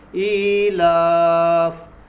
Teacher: تو یہاں ہم مد عارض کی مقدار اس کو کھینچیں گے